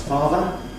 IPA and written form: ˈfɑːvə (father)